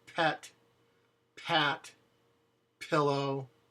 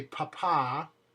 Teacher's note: If you say the word pet, pat, pillow, there's a puff of air behind it.